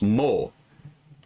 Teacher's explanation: So it's a O sound. So it's, you combine the nasal and the bilabial, it's a M sound. So it's mo.